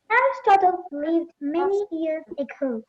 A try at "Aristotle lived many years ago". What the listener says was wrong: Aristotle lived. Aristotle, don't give the stress like the CBSE students in Kerala. It is not good. Don't give much pressure.